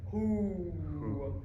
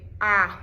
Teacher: It's a little bit more closed than the ah, because the ah, we have a big ah wide. But for this vowel, the formant 1 spacing is large and the formant 2 spacing is large as well.